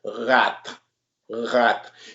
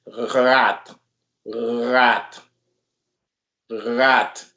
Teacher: But in Haitian Creole, when you say rat, it comes from your throat. Rat, rat. You have to feel the little vibration from your throat right here. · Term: the R sound